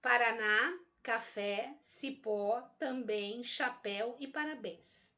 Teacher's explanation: todas elas são oxítonas, porque a sílaba tônica recai na última sílaba.